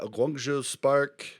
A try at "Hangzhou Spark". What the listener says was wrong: Hangzhou Spark, not Guangzhou. Hangzhou.